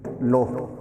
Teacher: ਹੋੜੇ ਦੀ ਜਿਹੜੀ ਮਾਤਰਾ ਉਹਦੀ ਨੋਰਮਲ ਆਵਾਜ਼ ਨਾਲੋਂ ਲੰਮੀ ਕਰ ਦੇਣੀ ਹੈ